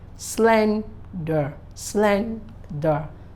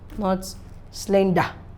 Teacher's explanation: Slender is a 2-syllable word, is an adjective, and when pronouncing it, the SLEN should be accentuated